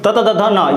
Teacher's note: त वर्ग में दंत, त त द ध न, यहाँ पर हल्का सा क्या हो, दांत से टच होता है